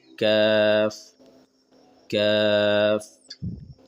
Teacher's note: زبان کی جڑ یعنی کہ زبان کے آخری والے حصہ کو تالو کے سخت والے نرم والے نہیں سخت والے حصے سے لگا کر کاف ادا ہو جاتے ہیں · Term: چھوٹی قاف